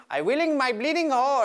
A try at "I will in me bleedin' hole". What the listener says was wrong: I'm saying moi, I want a me.